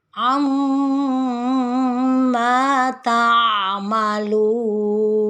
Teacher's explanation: diakhiri dengan suara yang rendah karena dadanya sudah turun